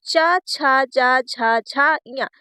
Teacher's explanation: चा वर्ग तालव्य से बोला जाता है